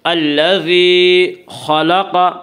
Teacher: خا کو اور قاف دونوں کو پر پڑھیں گے، کیونکہ خا اور قاف حروف مستعلیہ میں سے ہیں۔